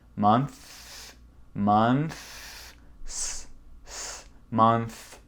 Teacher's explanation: C'est le premier son TH. Avec beaucoup de souffle.